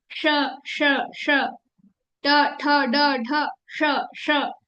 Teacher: ऊपर से मूर्धा से श ट ठ ड ढ श्र आपकी जीभ जहां ट बोलने के लिए टच कर रही है वहां पर वहां पर से ही श आएगा · ये साउंड वहां से आएगी, ऊपर से, मूर्धा से